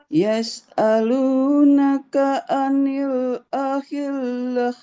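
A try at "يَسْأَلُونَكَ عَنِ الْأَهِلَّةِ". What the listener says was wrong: Ahillah. Nah, jangan tebal. Anil ahillah. Semuanya tipis.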